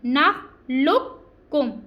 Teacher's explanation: آگے کاف باریک کاف ہے ہم نے کیا کرنا ہے کہ اس کاف کو چھوڑ دینا ہے پور والے کو اور ہم نے باریک کاف کو لام کے ساتھ ملا کے پڑھنا ہے